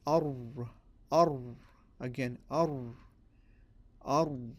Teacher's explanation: So you have here a schematic of the makhraj of the ra, and we see that the makhraj is the tip of the tongue against the first part of the hard palate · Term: heavy sound of the ra